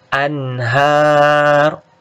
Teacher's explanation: nun sukun ketemu ha itu izhar, dibaca jelas